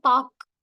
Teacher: வந்து சொல்லோட முதலிலும் இடையிலும் வரும்போது முழுமையா ஒலிக்கிறது அதுவே வந்து இறுதியில் வரும்போது ஒரு மாத்திரைக்கு பதிலாக அரை மாத்திரை அளவை ஒலிக்கிறது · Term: குற்றியல் உகரம்